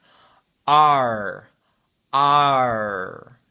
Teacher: c'est pas la gorge euh vous allez pas sentir dans la gorge vous allez le sentir euh à l'avant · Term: son r